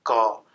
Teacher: कंठ पर बाधित करने की कोशिश कर रहे हैं, तब क का उच्चारण हो रहा है